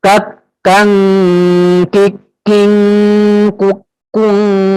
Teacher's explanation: Nah, kalau seandainya ketika tasjid ya syiddahnya lebih kuat, tidak di kak kikikuk, tidak, atau kikikukukak, atau seperti itu. Jadi lebih dikuatkan syiddahnya daripada hamsnya. Jadi hams itu ketika dimatikan saja ya, ketika mengucapkannya. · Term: huruf kaf